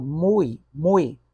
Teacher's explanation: nesse mui eu tenho uma vogal apenas e a outra que você acha que é vogal na verdade é uma semivogal